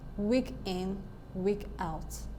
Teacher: in week in we have a stressed syllable followed by an unstressed syllable so weak is stressed weak is stressed and in is not · In the second phrase there we have week being stressed and out being unstressed. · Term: trochee